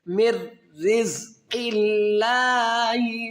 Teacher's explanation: لفظ اللہ کے لام سے پہلے زیر ہے تو لفظ اللہ کے لام کو ہم کیا کریں گے؟ باریک کر کے پڑھیں گے، موٹا نہیں کریں گے